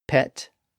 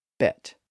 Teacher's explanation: So, P is voiceless, and B is voiced.